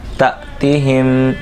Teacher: تا حمزہ ساکنہ میں جھٹکا دیں گے